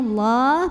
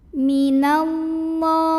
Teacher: Maka bacanya Allah, pangkal lidah diangkat. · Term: tafkhim